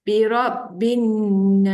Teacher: Nun sabdu ingat kena dengung dengung kat hidung bacaannya dua harakat